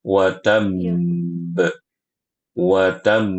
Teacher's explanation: bnya bertasydid sehingga ditahan dulu dua harakat